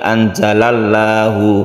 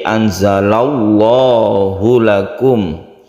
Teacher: lafadz Allah izin dengan tebal maka disebut dengan lam jalalah yang tebal atau tafkhim